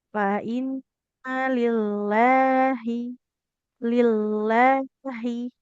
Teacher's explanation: lillahi yang panjang lamnya bukan hnya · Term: lamnya dipanjangkan